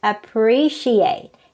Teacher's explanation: on the first syllable but actually the right pronunciation is appreciate it's on the second syllable so we have to stress the second syllable · So we have to stress the second syllable, appreciate.